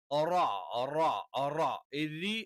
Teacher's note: അതേ സ്ഥാനത്തു നിന്നാണ് ഉച്ചാരണം പക്ഷേ നാവിന്റെ മധ്യഭാഗം മുകളിലേക്ക് ഉയരില്ല എന്ന് മാത്രം റരി എന്ന് പറയുമ്പോൾ നാവിന്റെ മധ്യഭാഗം താഴെന്ന് നിൽക്കും